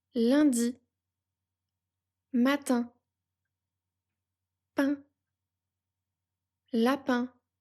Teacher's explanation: Pour prononcer le son 1, la langue reste plate et détendue plutôt au milieu de la bouche. L'air sort par la bouche et par le nez. C'est un son nasal. Les lèvres sont légèrement étirées comme pour un petit sourire.